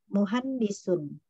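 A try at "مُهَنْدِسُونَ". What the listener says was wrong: Muhandisu, kalau sampai di akhir dibaca.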